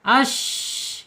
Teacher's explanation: Yaitu punggung lidah ya, punggung lidah terangkat, ash ya. Kemudian secara sifatnya ada di al-hams ya, al-hams mengalir napasnya